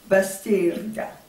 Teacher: Alors, quand les Français sont venus répertorier les noms des villages, ils ont entendu Bastirga. Bastirga, ils ont entendu le R qui roulait et qui n'est pas habituel en français. Donc ce R a été transformé à l'écriture en L parce que les consonnes R et L font partie d'un même groupe de consonnes qu'on appelle des consonnes liquides.